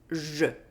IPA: ʒ